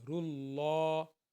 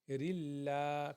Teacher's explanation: دیکھیں اللہ سے پہلے پیش آ گئی ہے، اللہ سے پہلے والے حرف کے اوپر زبر آ جائے، پیش آ جائے تو ہم اس کو موٹا پڑھیں گے. رُلَّہ اگر زیر آ جائے، رِلَّہ پھر لاں اللہ باریک پڑھا جاتا ہے